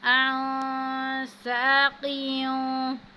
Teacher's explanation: اب نون ساکن ہے، اور نون ساکن کے بعد سین آ رہا ہے، تو یہاں پہ ہم اخفا کی صورت میں غنہ کریں گے